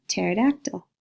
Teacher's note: we cut off the P and we start with the T sound